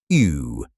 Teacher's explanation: U, which in English means U with umlaut, sounds like E with rounded lips